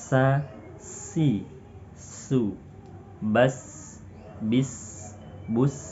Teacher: Artinya banyak nafas yang keluar ketika melafalkan huruf sin. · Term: hams